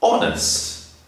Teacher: sometimes honest we do not pronounce the h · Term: silent